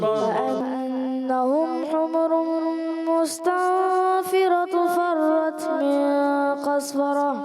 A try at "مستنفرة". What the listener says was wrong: مستنفرة ہے تن اخفا کا غنہ کرنا ہے تو ہے نہیں ہے دو پیش کی تنوین دوبارہ پڑھیں